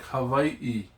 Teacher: An okina is the glottal stop in its scientific definition, but it is used to separate briefly two vowels.